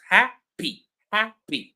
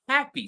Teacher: So, I'm I'm putting more effort into ha than into P. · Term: stressed syllable